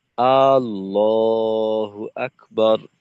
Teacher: তো আকে যদি লম্বা করা হয় সেক্ষেত্রে কিন্তু অর্থের পরিবর্তন হয়ে যাবে।